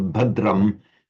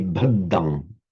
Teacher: you do occasionally find the original consonant cluster, like the dr, retained in Pali. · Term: consonant cluster dr